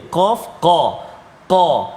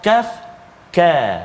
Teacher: Qaf duduk pangkal lidah, belakang dekat dengan anak sulung, bukan dekat dengan anak tekak. Belakang pangkal lidah ni, hujung dengan ni, hujung ni pangkal. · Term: huruf qaf